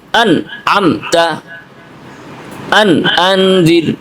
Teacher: স্পষ্ট করে গন্না ছাড়া পড়তে হবে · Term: ইজহার